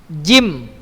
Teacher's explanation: Tengah lidah menempel pada langit-langit sehingga makrotnya betul-betul tertutup dengan sempurna. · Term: huruf jim